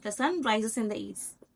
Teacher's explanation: there is no internation here there's no rising in pitch or falling in Pitch